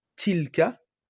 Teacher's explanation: il y a plus que l'extrémité de la langue qui s'appuie sur les incisives supérieures. Donc il faudra bien prendre garde à la lettre ta.